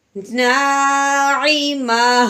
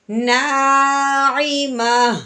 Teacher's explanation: وقف کی صورت میں ہا کی آواز نکالنی ہے، وہ بھی ساکن کرتے ہوئے